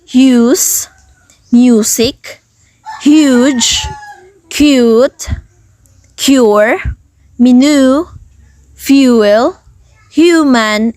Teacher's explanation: this long vowel sound is a little bit unusual because long vowels usually have 2 parts, but long U1 has 3 parts